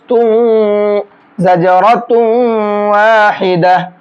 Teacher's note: کیونکہ تنوین کے بعد یہاں واو ہے اور یہ قاعدہ ابھی میں نے آپ کو بتایا ہے اوپر. تو اب یہاں تنوین کو واو میں مکس کر کے غنہ کر کے پڑھیں گے. تا واو دو پیش تم زجرۃ واحدہ.